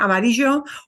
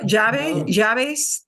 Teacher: I have a tiny bit of a J, but really, really cut short. Okay. Like a je with a Y, and the Y is a little more heavier sound than the je.